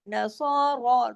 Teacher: دونوں را اور صاد دونوں موٹے پڑے جائیں گے